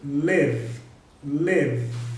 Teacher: esse V final aí, ele é extremamente vibratório. Eu estou falando V porque o verbo termina em E, mas o E não é pronunciado. · o verbo que termina num som vibratório